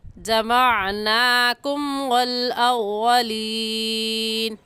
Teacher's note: لفظوں کو نکال کر پڑھیں گے، عین حلق کے درمیانی حصے سے نکال کر پڑھا جاتا ہے، تو نکال کر پڑھیں گے۔ عین کی جگہ حمزہ پڑھنا درست نہیں ہے